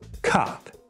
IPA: kap